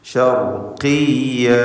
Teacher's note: റാഇന് തഫ്ഖീം കൊടുക്കുക. ഖാഫിന് കുറഞ്ഞ തഫ്ഖീം മക്സൂറത്തായതുകൊണ്ട് കസ്റ നൽകപ്പെട്ടതുണ്ട്